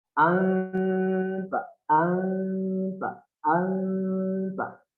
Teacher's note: Keluar dari ujung lidah bertemu dengan pangkal gigi depan atas. Pelafalannya seperti ini.